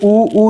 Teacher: उ ऊ जो है इसको जब बोलते हैं ओट गोल आकार ले लेता है